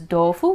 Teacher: Sometimes like a hard D sound, sometimes it's still a T sound. So if you just say tofu, make your F sound kind of quiet, then you sound Japanese, sort of.